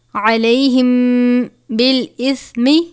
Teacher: میم ساکن کے بعد اگر حرف با آ جائے تو اخفائے شفوی کا قاعدہ لگتا ہے، یعنی غنہ کرتے ہیں